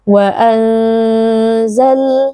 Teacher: huruf lam bainiyah, maka pastikan ada sedikit aliran suara